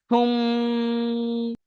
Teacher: তাহলে কি পড়বেন, মিমটাকে আগের অক্ষরের সাথে মেলাতে হচ্ছে তাসদিদ থাকার কারণে, সা মিম পেশ সুম, সা মিম পেশ কি হয়, সুম হয়। তো এখানে মিমের উপর তাসদিদ আসার কারণে গুণনা করতে হবে